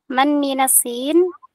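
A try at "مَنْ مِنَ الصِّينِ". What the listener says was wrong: Man minasini, dibaca harokat akhirnya.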